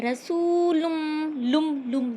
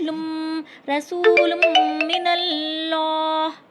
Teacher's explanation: جب آپ لم کہہ رہے ہیں تو نون کی آواز یہاں بھی فیل ہو رہی ہے, لیکن غنہ میم کے ساتھ ہو رہا ہے. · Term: ادغام میم